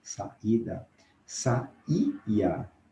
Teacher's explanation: Se nós não acentuamos, o leitor, a pessoa que vai falar para a aula, pode achar que é um ditongo, ele não é. É um I que tem força tônica, então eles são, na verdade, vogais formando hiato. Veja exemplo, saída, se nós não colocarmos o acento no I, que é forte, vai ficar saída, né?